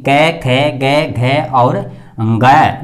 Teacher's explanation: जब स्वर यंत्र से हमारी ध्वनि जब बाहर निकलती है तो ये कंठ को स्पर्श करते हुए बाहर की तरफ आ जाती है।